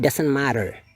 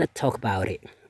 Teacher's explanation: Karena orang Amerika kalau bunyi vowel mengapiti T kayak gini, dia T ini berubah menjadi bunyi D yang halus, soft D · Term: flap D